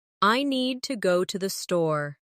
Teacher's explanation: Make need and store strong. And let to the be quick and light. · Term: rhythm